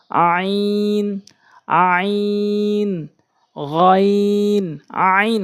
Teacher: হলকের মাঝখান থেকে চাপ দিয়া